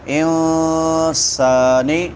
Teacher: نون ساکن ہے تو یہاں پہ اخفا ہوگا کیونکہ بعد میں حروف اخفا میں سے سین ہے. انسا الف مدہ ہے.